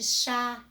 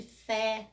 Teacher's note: O acento agudo me traz um som aberto das vogais.